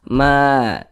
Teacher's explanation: Ja ini dibaca panjang, ini namanya adalah mad wajib muttasil.